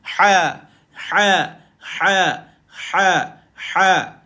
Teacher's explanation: dia nipis dan dia pedas dia duduk di tengah kerongkong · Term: ha pedas